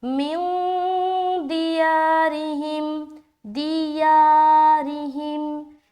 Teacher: یا کو کھینچ رہے کیونکہ اس کے اوپر کھڑا زبر ہے